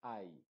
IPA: aɪ